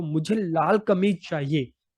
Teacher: इस वाक्य में लाल शब्द पर ज्यादा बल दिया गया है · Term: शब्द बलाघात